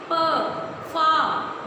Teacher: बोल के देखिए, पा वर्ग के जितने भी अक्षर हैं सभी में हमारे ओष्ठ आपस में मिलते हैं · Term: ओष्ठ वर्ग